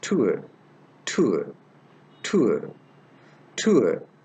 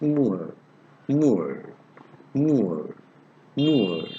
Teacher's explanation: The starting point is little closer to oo as in put.